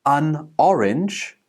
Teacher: we connect the last consonant sound to the next vowel sound, and we call this linking